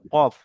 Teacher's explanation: 4 নম্বর মাখরাজ জিভের গোড়া এবং তার বরাবর উপরে তালুর সাথে লাগিয়ে উচ্চারিত হয়। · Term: দুই নক্তাওয়ালা কফ